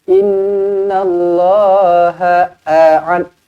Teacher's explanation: nun yang bertanda sabdu wajibul gunnah dengung dua harakat